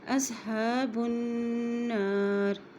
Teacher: نون کے پاس شد ہے، اس لیے یہاں پہ غنہ کرتے ہوئے چلیں گے